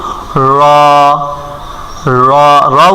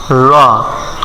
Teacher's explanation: তারপর কি আছে র, র, র উচ্চারণ করে কিভাবে, জিহ্বার আগা এর পিঠ, জিহ্বার আগার এই পিঠ, উল্টা পিঠ, উল্টা পিঠ ঠিক ওই বরাবর, মানে জিহ্বার আগাটা আমাদের মূলত যেখানে থাকে ঠিক ওখান থেকে সোজা উপরে উঠাইয়া র, র এভাবে উচ্চারণ করতে হবে র।